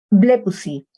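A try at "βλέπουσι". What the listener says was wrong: Blepusi. El tercera plural. Muy bien, muy bien.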